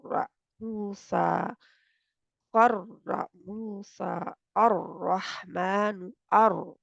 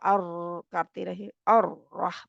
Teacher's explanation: pressure जो होता है हमारा ये जुबान की नोक के ऊपर होता है